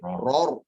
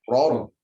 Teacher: Ya, jangan ror, tidak ror. Ada naik intonasi sedikit